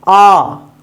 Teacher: आ जो आ बोलते हैं उसमें सबसे ज्यादा मुख खुलता है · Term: विवृत, विपरीत